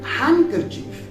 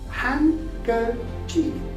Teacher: So that's why D is left unpronounced. When you pronounce first N, you don't need to pronounce D then. So you will say handkerchief.